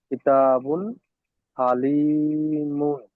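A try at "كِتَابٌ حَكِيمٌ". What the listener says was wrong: ওটা লাম নয়, ওটা কাফ। হাকিমুন।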